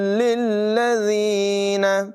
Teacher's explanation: یہاں تا کو لام کے ساتھ ملانا، پھر لام کو اگلی لام سے ملائیں گے. ذال کو بغیر سیٹی کے پڑھیں گے